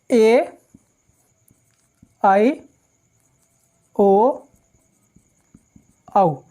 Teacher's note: ओ और औ, इनका उच्चारण करने के लिए किससे, कंठ और ओष्ठ। · ए और आई का जो उच्चारण होता है वो होता है कंठ तालव्य। अर्थात ए और आई को हम कंठ और तालव्य यानी तालु और कंठ दोनों के मिलाकर जब हम उनका उच्चारण कर पाते हैं, यानी जब ए और आई का उच्चारण करना होगा तो हमको कंठ और तालु दोनों की सहायता लेनी पड़ती है ना। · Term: कंठोष्ठीय